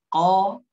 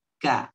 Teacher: Nah, jadi di bagian pangkal ada 2 makhraj yaitu qa dan ka. Qa-nya itu menyentuh daging dan ka itu menyentuh tulangnya yang depan. Jadi qa ka gitu ya.